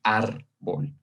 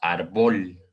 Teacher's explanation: está aquí en esta sílaba ar, nosotros la vamos a decir de una forma más fuerte